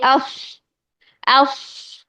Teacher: ایک سانس کی ساؤنڈ ہی بن رہی ہے جو سیٹی کی شکل میں نکل رہی ہے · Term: صفیر